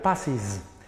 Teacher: agregándole la ES, la cual se va a pronunciar is